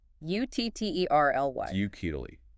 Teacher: 3 syllables. Stress on the first.